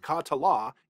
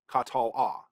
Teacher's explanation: um the preceding vowel isn't short so this isn't silent but we really reduce the vowel so we're really reducing that to almost like a half syllable rather than a full syllable